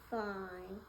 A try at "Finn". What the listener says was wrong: It's Finn. So 2 N's, there's no E right there. So that's fine right there. That one has the E.